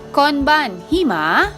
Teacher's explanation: take note of my rising intonation which denotes that what i've said is a question